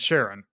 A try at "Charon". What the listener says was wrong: It's not said Sharon. It's Karen. The ch is pronounced like k.